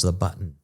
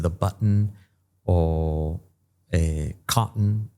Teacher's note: como que es una interrupción de aire en la garganta, que se llama la stop T